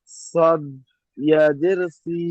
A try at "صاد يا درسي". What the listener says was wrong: صاد ইয়া জের সি, টান থেকে পড়েন, টান টান।